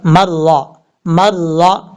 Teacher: خَاوِيَةٌ، اب یہاں سے میم کو را سے کنیکٹ کریں گے، را کے اوپر زبر ہے، را پر پڑھا جائے گا